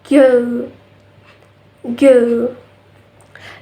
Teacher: But this sound is voice. So there is a vibration in our vocal folds